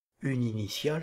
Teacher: Le E final de une s'élide avec le I initial d'initiale. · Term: élision